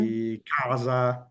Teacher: la nostra comune occlusiva velare sorda, la C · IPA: [k]